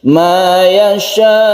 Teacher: suara hamzah yang disukun itu harus jelas, dan yasha-nya itu tetap kita panjangnya disiplin 2,5 alif. Ma yasha. Jadi sukun hamzah tidak sama dengan sukun ain. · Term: mat wajib muttasil